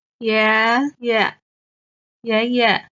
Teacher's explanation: The first character, 爷 is the second tone. The second character, 爷 is the neutral tone